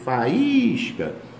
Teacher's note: Faísca é o I tônico seguido de S de um hiato.